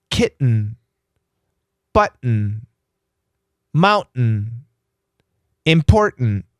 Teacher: when the tongue goes to the T the tongue stops and then it makes an N